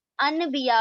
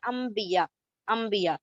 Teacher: यानी कि नून की आवाज को आपने मीम से बदल दिया। तो क्या रूल है, नून साकिन या तनवीन के बाद बा आ जाए तो आपने क्या करना है, उस नून साकिन या तनवीन की आवाज को बस मीम से बदल देना है। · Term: इकलाब